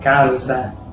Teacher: La letra S en portugués, al inicio de una palabra o después de una consonante, tiene sonido de S, como en español. Pero entre vocales tiene sonido de Z, como la Z del inglés, que es igual que la Z del portugués.